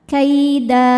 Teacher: Karena ada harakat tanwin fathah yang diwakafkan. Cara bacanya tanwinnya diganti dengan bunyi fathah saja ya. Jadi tidak ada bunyi n-nya. Lalu panjangkan dua harakat. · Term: mad iwad